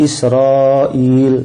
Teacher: Dia panjangnya lima lima harakat tapi dalam satu kata. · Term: mad wajib muttasil